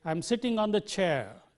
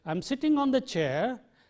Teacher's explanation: situations in English in ordinary statements a falling tone is used a falling tone is used to convey the meaning of completion that your meaning is complete